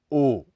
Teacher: इसके उच्चारण में जीभ का पिछला हिस्सा ऊपर की तरफ उठता है इसके उच्चारण के समय भी होठ गोल हो जाते हैं किंतु उ अथवा उ की भांति गोल नहीं होते यहां हो